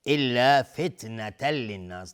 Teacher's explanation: تنوین بعدش لام ادغام بدون غنه